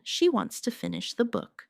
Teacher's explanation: Stress wants and book, and let to finish the be soft and fast.